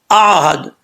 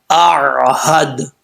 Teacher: پہلے حمزہ کا ساؤنڈ آئے گا، پھر عین کا. حمزہ کو سختی سے پڑھیں گے. عین جو ہے یہ نارمل طریقے سے پڑھا جائے گا. بعض اوقات لوگ پڑھتے ہیں آہد، جھٹکا دیتے ہیں، جھٹکا نہیں دینا.